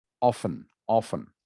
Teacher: usually english speakers will make the t silent okay so that the word is pronounced often with no t sound